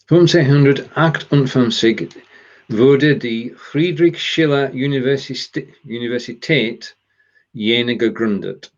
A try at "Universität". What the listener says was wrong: You made the mistake of pronouncing one word in English because it's so close to English. Es 1558 wurde die Friedrich-Schiller-Universität Jena gegründet.